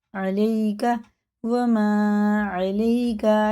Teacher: یا ساکن سے پہلے زبر ہے تو جلدی پڑھیں گے، حرف لین ہے